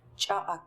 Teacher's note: The fourth C, it's a wedged and glottalized C